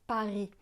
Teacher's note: Le S de Paris est muet.